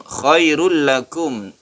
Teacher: Khairul lakum tanwin bertemu dengan lam, idgham bila gunnah.